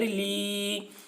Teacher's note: یا ساکن سے پہلے زیر ہے، یا مدہ ہوا، اس لیے یا مدہ کو ایک الف کے برابر کھینچ کر پڑھیں گے